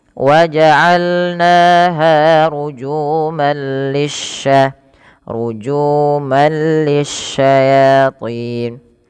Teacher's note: langsung masukkan tanwinnya ke huruf lam yang bertasydid tapi tidak disertai dengan penahanan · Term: Idgham bila gunah